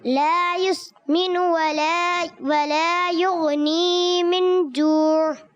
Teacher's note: اور یغنی یہاں یا مدہ، اس کو ایک الف لمبا کریں گے